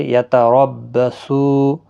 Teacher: سو واو مدہ ہے، ایک الف کی مقدار کے برابر کھینچ کر پڑھیں گے، اور را زبر کی وجہ سے پر پڑھا جائے گا، میم ساکن ہی رہے گا وقف کی صورت میں۔